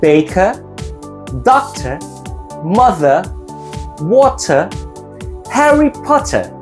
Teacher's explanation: the r is not pronounced the British R is silent when the r is in the middle of the word but